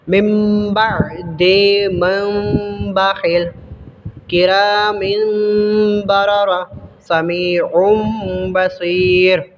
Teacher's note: نون ساکن اور تنوین کو میم سے بدل کر غنہ کے ساتھ پڑھتے ہیں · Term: اقلاب